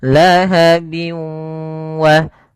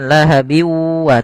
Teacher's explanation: dimasukkan ke huruf wau dan ditahan karena disertai dengan gunah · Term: idgham bighunah